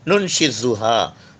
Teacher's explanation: پھر سے آ گیا وسلنگ ساؤنڈ، سامنے کے دونوں دانت اور زبان کی نوک